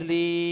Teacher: یا ساکن سے پہلے جب زیر ہو تو یا مدہ کہتے ہیں اور اس کو کھینچ کر پڑھا جاتا ہے ایک الف کے برابر